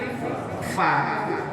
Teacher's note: Tapi kalau FA bawahnya harus nempel dengan gigi atas sehingga bunyinya bukan pa tapi Fa